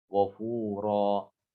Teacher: Ghafura, tidak boleh lebih. Panjangnya tidak boleh lebih daripada 2 harokat. Ya, ini namanya mad iwad.